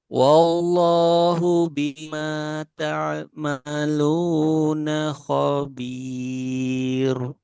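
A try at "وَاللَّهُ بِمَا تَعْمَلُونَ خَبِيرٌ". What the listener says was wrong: Nah, itu masih tebal. Di sini kan roknya tipis. Khabir. Nah, tipiskan lagi.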